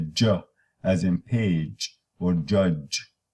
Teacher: Oh, and the j, as you have a voiced stop released into a voiced fricative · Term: affricate